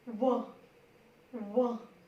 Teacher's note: दांत और होंठ दोनों जुड़ेगी, इसमें जिह्वा नहीं, आप दांत और होंठ देखिएगा ऐसे। व दांत और होठ दोनों का ही इसमें प्रयोग होगा।